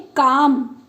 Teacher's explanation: का पे के ऊपर बलाघात होगा